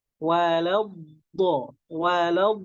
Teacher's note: Maksudnya memajukan kedua bibir. Walau Karena dotnya bertasydid, di situ ada nabroh, ada tekanan.